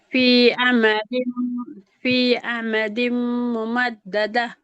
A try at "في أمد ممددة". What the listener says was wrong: ஐனை இன்னும் தொண்டையால் எடுக்கணும்.